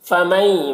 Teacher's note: مئی میں ادغام ناقص ہو رہا ہے، نون کو یا سے ملا کر غنہ کے ساتھ میں پڑھیں گے